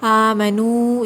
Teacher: لذین، یا ساکن سے پہلے زیر ہے، یا مدہ ہے۔ آمنو، یہاں پر بھی واو ساکن سے پہلے پیش ہے، واو مدہ ہے، 2 کاؤنٹس کھینچیے